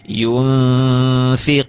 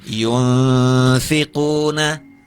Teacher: ikhfa maal gunah istilahnya maka ditahan